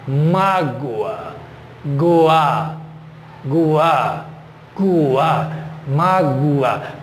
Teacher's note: o O, ele tem um sonzinho muito leve de U